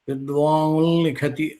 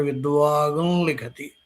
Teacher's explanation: వచ్చిన లకారం కూడా అనునాసిక కాని లకారం వచ్చింది. విద్వాన్ లిఖతి అనే చోట విద్వాన్ నకారం ఈ నకారం అనునాసిక వర్ణం కాబట్టి అనునాసిక లకారం ఉంది కాబట్టి నకార స్థానంలో అనునాసిక లకారం వస్తుంది